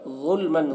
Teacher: ظلمن ظا کو پر پڑھنا ہے، حروف مستعلیہ میں سے ہے. اور میم میں جو تنوین ہے یہاں پر اظہار حقیقی ہو رہا ہے، اس کو جلد پڑھنا ہے